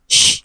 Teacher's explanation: we have sh, which is a voiceless sound